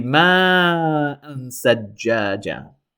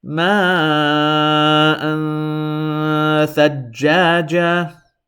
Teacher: Notice I held this Hamza fathatan in my nose.